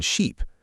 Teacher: a vowel pronounced with more muscle tension, usually held longer, like the e in sheep. For example, the long e sound is tense, not relaxed.